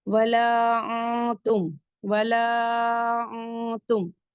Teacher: نون ساکن کے بعد تا آ رہا ہے تو یہاں پہ اخفا ہوگا کیونکہ تا حروف اخفا سے ہے.